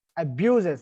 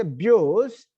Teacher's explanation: stress will not be changed if there are inflectional suffixes. Till we say abuses, the stress is still there on ba. Without inflection, I say abuse, and with the inflection suffix, still I say abuses, right?